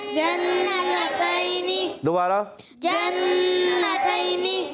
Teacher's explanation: تا یا زبر تئی یہ بھی نہیں کھینچیں گے، مگر یا لین ہے، یا ساکن سے پہلے زبر آ رہا ہے، یا لین نرمی سے ادا کریں گے، کھینچیں گے نہیں